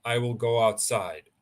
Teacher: if you say in a flat tone I will go outside then that is just a statement